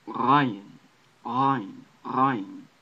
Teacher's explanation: It's a roll from the back of your throat, not like the roll at the tip of your tongue.